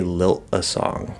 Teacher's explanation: we'd just say lilt a song. Lilt and do like a stop T. Um or maybe lilt a song, you can push out the T.